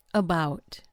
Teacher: Notice how the first syllable, it's an A, turns into a schwa